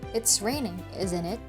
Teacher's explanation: The rising intonation suggests that we're not sure and would like a response from the other person.